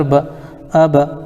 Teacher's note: حمزہ کے اوپر زبر ہے، زبر کو جلدی پڑھیں، تھوڑا بھی نہ کھینچیں۔ زبر کی آواز اوپر کو اٹھتی ہے